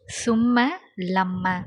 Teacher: ஷத்து செய்யப்பட்ட மீமுக்கு உதாரணம் சும்ம லம்ம, சும்ம ஷத்து இருக்கா, அப்போது குன்னா செஞ்சு சொல்லணும்